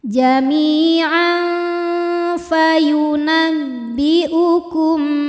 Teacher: Karena makhraj huruf fa ini tidak terlalu dekat dan tidak terlalu jauh dari nun, maka bunyi samar dan dengungannya seimbang. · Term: ikhfa awsato